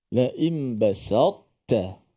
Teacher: Walaupun idgham ke dalam ta, tapi tak diidgham sepenuhnya.